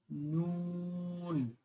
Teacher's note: জিহ্বার আগা তার বরাবর উপরের তালুর সঙ্গে লাগিয়ে